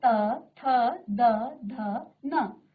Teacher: आप त थ द ध न, त थ द ध, त थ द ध उच्चारण कीजिए बार बार। तो आप महसूस करेंगे कि आपकी जो जीभ है वो कहीं ना कहीं आपके दांतों को स्पर्श कर रही है। और क्योंकि इसका उच्चारण स्थान दंत है इसलिए इन्हें दंत्य कहा जाता है।